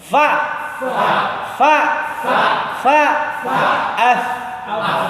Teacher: Ujung gigi seri bertemu dengan perut bibir bawah.